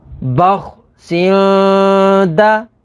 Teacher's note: تنوین کے بعد دال ہے، دال حروف اخفا میں سے ہے، تو یہاں پر اخفا یعنی غنہ کر کے پڑھیں گے